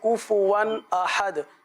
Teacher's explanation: حروف قلقلہ آخر میں انہوں نے بہت اچھا ادا کیا